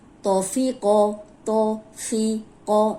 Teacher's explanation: اب فا جو ہے وہ باریک ہے، تو موٹا ہے، قوف موٹا ہے